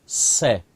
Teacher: और जो तीसरा स होता है इसके उच्चारण में जीवा दांतों को छुएगी। जब जीवा दांतों को छुएगी तो वहां से सीटी निकलती है